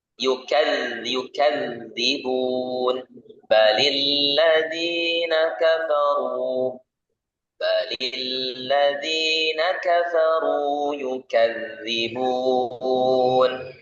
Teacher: Nah, jadi untuk huruf dal perhatikan yukadzibun balil ladzina kafaru yukadzibun. Nah, itu perhatikan huruf dal tidak ada angin yang keluar, tetapi adalah suara yang mengalir. Ya, tidak ada aliran angin, tapi aliran suara.